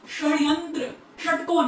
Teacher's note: आप टंग को ट्विस्ट करके बोल रहे हो, रेट्रोफ्लेक्स। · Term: मूर्धन्य श